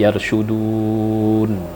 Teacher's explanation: Jadi yarshudun, boleh panjangnya 6 harakat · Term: mad arid disukun